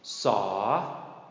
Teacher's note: Saw. Drawn out, long rising tone.